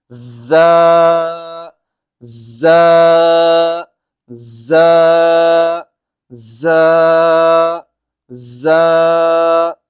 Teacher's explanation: تھوڑی اٹھتی ہے، رو رو رو رو۔ اب ہے زا، زا، یہ زا جو ہے وہ سختی سے ہوتا ہے، یعنی کہ دونوں دانت جڑتے ہیں پھر اس میں از از از اس طرح کی آواز جو